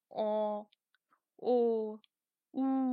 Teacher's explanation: যেমন কি অ, ও, উ, ঠোঁট কুঞ্চিত হয়ে গেছে, একদম ছোট হয়ে আসছে।